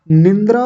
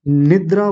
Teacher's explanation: निंद्रा यानी अपनी ओर से बीच में न लगा लेते हैं। निंद्रा नहीं होता।